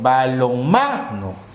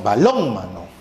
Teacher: El acento está en ma, ya no en lon, sino diríamos balónmano.